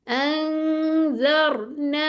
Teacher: नून की आवाज को छुपाना है, इस तरह छुपाना है कि जो अगले लेटर के मखरज के बिल्कुल करीब चले जाएं, जैसे वो अदा होने ही वाला है। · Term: इख्फा